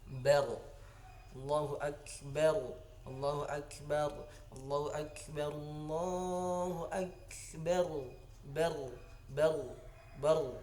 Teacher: Nah, bar itu wajib ra-nya tebal. Kenapa? Karena jatuh hukumnya hukum ra yang tafkhim atau ra tebal.